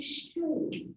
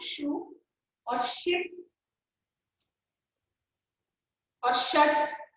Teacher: Voiceless post-alveolar fricative. That is in shoe.